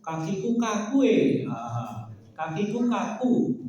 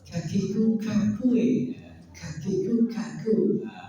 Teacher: Kalau ka tipis tapi ada nafas. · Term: hamas